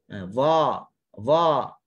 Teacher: Kena ingat, isti'la berkaitan dengan pangkal lidah. Pangkal lidah terangkat yang menghasilkan huruf yang disebut dengan tebal.